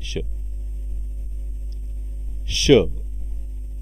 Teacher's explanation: मूर्धन्य व्यंजन वर्ण आहे कारण जिभेचा शेंडा वर टाळूच्या मध्यभागी लागतो